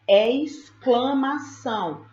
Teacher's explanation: Na palavra exclamação, eu ouço o som do S e eu ouço o som do K.